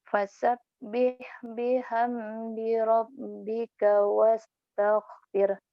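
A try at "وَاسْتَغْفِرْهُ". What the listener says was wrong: Salah, bukan wastaghfir, wastaghfireh kalau berhenti di situ. yang salah wastaghfir, hanya dibuang dong. Wastaghfireh. Banyak orang yang salah, ustadz kadang-kadang imam sholat wastaghfir. Wastaghfirhu dan minta ampunlah hu kepadanya.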